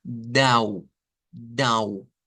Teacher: con una A y con una U corta, pero nasalizada. Entonces el sonido va a ser algo como dau, dau, con un, dau.